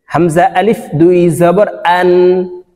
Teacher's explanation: হামজা হলকের শুরু থেকে উচ্চারণ হবে।